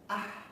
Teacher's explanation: Suaranya tipis dan lidahnya rileks. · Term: istifa